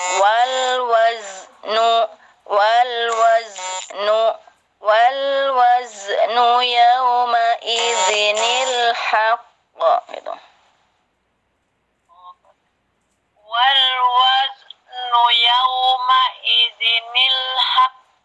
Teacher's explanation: Wasnya disempurnakan dulu, jangan jangan dilepas lidahnya. Sempurnakan, baru pindah ke nu langsung.